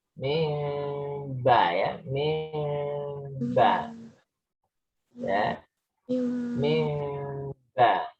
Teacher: Untuk iklab ya, iklab itu tidak murni mim sebenarnya. Mimnya agak renggang ya.